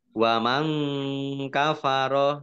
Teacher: nun sukun bertemu dengan huruf Kaf bacaan Ikhfa dibaca samarsamar